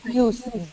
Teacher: In produce, the stress is on the first part of the word.